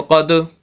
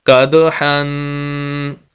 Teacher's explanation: یہ کلکلا کریں گے، کاف کو دال کے ساتھ ملائیں گے، دال ساکن ہے